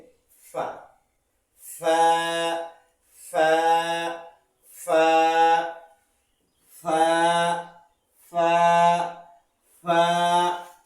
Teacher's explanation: ফা সামনের উপরে দুইটা দাঁত এবং ঠোঁটের উপরে এসে চাপ পড়বে।